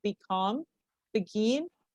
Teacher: In disyllabic words with a prefix which has lost its meaning, the stress falls in the second syllable, that is to say, on the root syllable